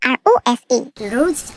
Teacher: R은 제가 모음 하면서도 얘기를 했었는데요. 혼자 맨 앞에 있을 적에는 그냥 입천장을 혀에 대지 않고 목구멍 안쪽으로 이렇게 당기면서 굴리는 소리가 납니다.